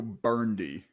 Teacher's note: I will say it's burgundy okay I'm gonna go burndy and just drop the middle syllable